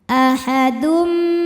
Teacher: Maka tanwin dimasukkan ke mim, ahadun, sambil ditahan bunyi m-nya dengung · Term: idghom bighunnah, idgham bi gunnah